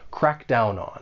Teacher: all and when you pronounce this phrase more linking may occur we can link the final consonant sound in down with the vowel sound